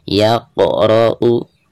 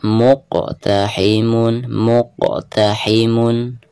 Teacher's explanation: huruf qaf ketika sukun maka dihukumi qalqalah, dan cara membacanya harus dipantulkan ya.